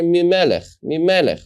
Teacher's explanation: But if I want to say it quickly, min melech, what happens is that the noon is set close to the melech, min melech. And if I say it many times, I don't hear the noon anymore. I hear mi melech, right? It's as if the noon becomes the mem.